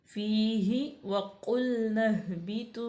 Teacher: क़ाफ को मोटा पढ़ेंगे, लाम बारीक है, लाम साकन भी है, और नह अलिफ जो है ज़ायद है, इसके बाद हा साकिन था तो नून को हा में मिला देंगे।